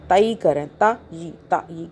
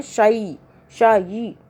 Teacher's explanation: تا یا زبر، یہاں پہ جو آپ کو بولا نا واو اور یا کو یاد رکھیں، تو یہاں پہ جو یا آ رہا ہے یہ لین ہو رہا ہے، ہم کھینچ نہیں رہے، مدہ نہیں کر رہے، تائی کریں، تا ی، کیونکہ یا سے پہلے زبر آ رہا ہے اس لیے۔